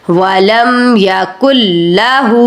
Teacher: यहाँ पर आपने रुक कर अदा करना है, लाम को खींचना नहीं है। लाम के ऊपर शद है, मुशद्दद हरूफ लाम है, इसलिए आपने लाम को ज़रा रुक कर सख्ती से अदा करना है। अगर आप इसको खींचेंगे तो यहाँ पर आप खड़ा ज़बर लगा देंगे, जबकि यहाँ पर खड़ा ज़बर नहीं है, खींचने वाला साइन नहीं है।